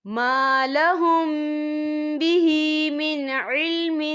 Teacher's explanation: لفی شک من ما لہم بہ من علم، یہ دیکھیں ما لہم، یہاں میم ساکن ہے، میم ساکن کے بعد جو ہے با آ رہا ہے تو یہاں پر اکفا شفوی ہوگا اور ہم یہاں غنہ بھی کریں گے، اور غنّے کی مقدار جو ہے 2 سے 3 سیکنڈ ہوگی